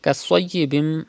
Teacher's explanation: There is sod in this word, and sod is from mustalia letters. You have to read with thicker voice. And there is meme after tanween, after two zir.